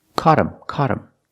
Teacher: the word is not stressed so you don't hear the th and again the t is a fast D · now that T is between vowels, phonetically, so it changes to a fast D, and you hear caught him, caught him.